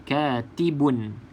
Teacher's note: Katibun, tak boleh dengung. Tak boleh dengung.